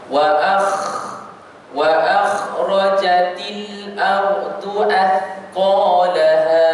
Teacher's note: Kalau kita tengok huruf kha, ar-rukhawah dia terlepas semuanya.